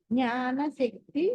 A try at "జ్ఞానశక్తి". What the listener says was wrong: సా కదు ష, శక్తి ష, సా కదది ష, శక్తి. సా కాదు ష. ఇప్పుడు షా కరెక్ట్ గా అంటారు. మీరు సాకి షాకి రెండింటికి తేడా ఉండాలి, మీరు అందులో కూడా ఉండట్లేదు. సా సరళ, అలా అలాతే సగుణ, సరళ, సగుణ, ఇది సా. శ్యామల, శకుంతల, శివ, ఇది ష.